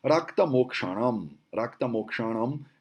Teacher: Ele é uma junção de duas consoantes, que essa consoante K com a consoante Sh, que é o S, é o sibilante cerebral, ela ganha essa cara de meio clave de sol, bem doida, né?